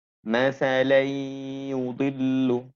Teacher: memasukkan suara tanwin kepada suara ya dengan menahan 2 harokat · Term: idgham bi gunah